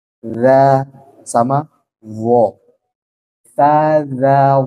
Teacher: ujung lidah bertemu dengan ujung gigi seri atas